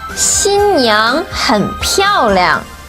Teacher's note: 漂 fourth tone. 亮 neutral tone.